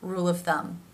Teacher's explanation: The bottom lip moves up, to the teeth, to make that V sound